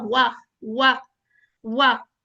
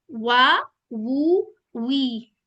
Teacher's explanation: वा, वू, वी, तीनों के ऊपर हमारे होंठ गोल होने हैं